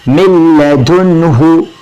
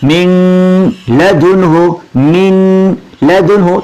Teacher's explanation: ملا کے تو پڑھیں گے لیکن غنہ نہیں کریں گے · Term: بغیر غنہ کے